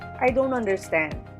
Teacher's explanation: I is the first syllable, don't is the second syllable, on is the third syllable, der is the fourth syllable, and stand is the last syllable. Therefore, the peak is on sta, and then we'll place movement after that. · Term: glides